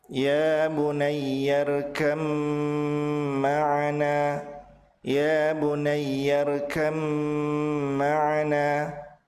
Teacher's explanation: Huruf ba melebur ke mim dengan ditahan dua harokat. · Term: idgham mutajanisain